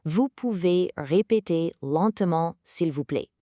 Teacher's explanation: Make sure to raise your voice at the very end of the sentence. In French, that rising intonation ensures it sounds like a question rather than a demand.